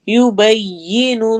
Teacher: जलाला को मोटा पढ़ना है